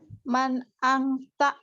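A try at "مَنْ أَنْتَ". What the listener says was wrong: Anta, bukan angta, anta. Jangan, nggak usah pakai ikhfa, jangan anta.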